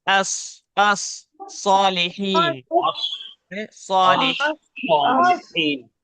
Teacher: स्वाद निकालते वक्त ये ख्याल रखना है कि उसे मोटा पढ़ना है, इस सीन की तरह पतला नहीं पढ़ना है, क्योंकि ये लाइट वर्ड है।